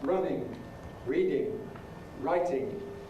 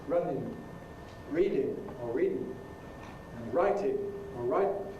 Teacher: In standard English, standard accents, it's pronounced with a velar nasal [ŋ], thus 'running' [ˈrʌnɪŋ], 'reading' [ˈriːdɪŋ], 'writing' [ˈraɪtɪŋ]. But in non-standard English pronunciation, it tends to be pronounced with an alveolar nasal [n]